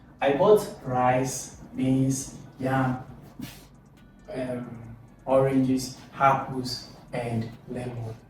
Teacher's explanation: the last item on the list often have the downward intonation, while other items before that one has the high intonation or the upward intonation. For example, you can see upward, upward, upward, and then downward. · The voice rises for items in the list and falls at the final item. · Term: intonation in a list